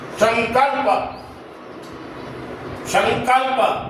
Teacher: तो अनुस्वार के आगे वर्ण है क तो ये है क वर्ण का और क वर्ण का पांचवा वर्ण कौन सा है तो वह है अंग ये पांचवा वर्ण तो यहां न उच्चारण नहीं होगा म भी उच्चारण नहीं होगा अंगा की ध्वनि आएगी। अंग भी पूरा नहीं है।